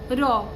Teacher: রয়ের উচ্চারণ করতে জিহ্বাগ্র কম্পিত হয়, সেজন্য র কম্পনজাত বা রণিত ধ্বনি।